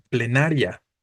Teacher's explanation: Aquí tenemos la terminación ia o ia, pero otra vez la sílaba tónica no se encuentra entre la I y la A, se encuentra en na específicamente